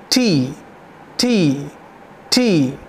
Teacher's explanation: आपका जो टंग है, उसका जो टिप है, वो टॉप ऑफ द रूफ, जो हमारे ऊपर का जो टीथ है उसके ऊपर जब जाते हैं तो रूफ है एक, और टॉप ऑफ द रूफ को छूता है और रोकता है, वहाँ पर स्टॉप करता है एयर को और फिर रिलीज़ करता है। तो जब आप इस पेपर को सामने रखेंगे, पीस ऑफ द पेपर को, तो ये वाइब्रेट होगा, टी टी टी, extra breath आपको यहाँ लेनी है।